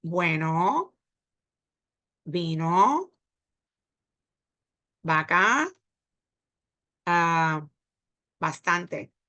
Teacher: I don't hear the V because we sound like a B.